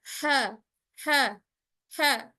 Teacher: huruf ha ini ada pada tengah tenggorokan atau waslatul half, tepatnya pada katup epiglotis · Huruf ha ini diucapkan secara mudah. Ha ha ha. tidak ada tekanan sama sekali pada makhrajnya